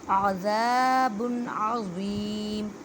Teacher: عین کو حلق کے درمیان والے حصے سے ادا کریں اور ذال کو 1 الف کی مقدار میں کھینچ کر پڑھیں کیونکہ الف مدہ کا قاعدہ ہو رہا ہے۔